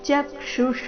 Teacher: ಚಕ್ಷುಷ ಚ ಮೇಲೆ ಸಹ ಆಘಾತ